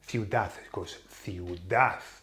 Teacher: the emphasis now falls on the very last vowel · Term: broken nose rule